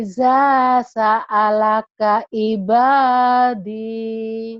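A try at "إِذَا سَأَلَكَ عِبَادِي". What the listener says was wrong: Bagus, cuman lagunya aja masih masih belum berani.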